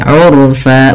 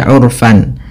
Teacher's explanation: Ketika kita berada di akhir bacaan ini, kita baca dengan bacaan mad iwad, yaitu mengganti fathatain menjadi panjang. Sebagaimana mad thabi'i urfa bukan lagi urfan, tapi urfa dua harakat.